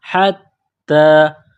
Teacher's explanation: تا کے اوپر کڑا زبر ہے، ایک الف کے لمٹ میں کھینچنا ہے